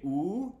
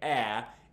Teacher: you say OO, it's high and back. And when you say ah, it's low and forward.